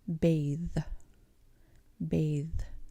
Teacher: your tongue going in between your front teeth creates that th sound